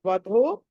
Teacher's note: ధ అన్నది మహాప్రాణం కాబట్టి వత్తి పలకాలి